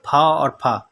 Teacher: अघोष महाप्राण है वो फ